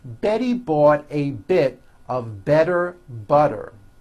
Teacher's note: all the T's are pronounced as D's because they fall between vowels